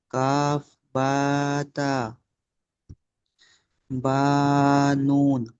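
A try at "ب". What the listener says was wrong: টান দেন, কোন হরফ কত আলিফ টান, সেরকম টেনে পড়েন। এখানে এখানে একসঙ্গে এসছে বলে কি টান হবে না?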